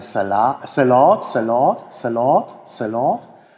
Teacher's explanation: das A ist leicht angehoben